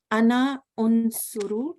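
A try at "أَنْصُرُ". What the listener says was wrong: Swad with fatha. Ana unsaru.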